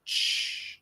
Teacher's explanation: ch is a combination between t and what we call the sh sound